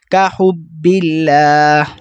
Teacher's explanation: اب ہم نے پیچھے پڑھا اللہ کی لام کو پر کر کے، کیونکہ اس سے پہلے زبر تھا، لیکن یہاں پر زیر ہے، پہلے اللہ کی لام سے پہلے والے حرف پر زیر ہے. تو ہم نے کیسے پڑھنا ہے، باریک پڑھنا ہے